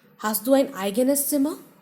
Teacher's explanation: So, you stress on eigenes.